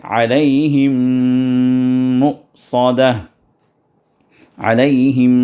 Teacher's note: میم پہ شدہ ہے تو دو حرکت تک دبا کر وہاں پر غنہ کیجئے